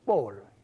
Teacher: But what you do is to change the tone of Bol. So instead of just being Bol, it's now Bol. So it's a falling tone. So Bol's brother is Manne Bol.